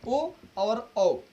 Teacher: कंठ और ओष्ठ से उच्चारण होने वाले कितने वर्ण हैं? तो दो हैं, ओ और औ